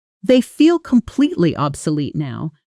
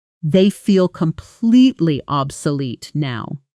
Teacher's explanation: In technical or opinion-based sentences like this one, native speakers often stress the word that carries the strongest emotional judgment, in this case, obsolete, while letting the surrounding words soften and speed up. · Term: natural stress